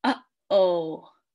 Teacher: So the little apostrophe that goes on uh-oh. So you kind of want to stop the airflow in your vocal cords and get that sound. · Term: glottal stops